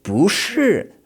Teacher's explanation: A much longer and more emphasized second tone. But when it's said mid-sentence, especially when it's not really emphasized, it's just like going up a little bit at the end of a question in English, okay?